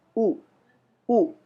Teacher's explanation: kita mengucap huruf o bibir kita membulat o dan kita ketika kita mengucapkan huruf u bibir kita semakin membulat